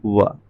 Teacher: जो दंतोष्ठ ध्वनि है वो है हमारी वा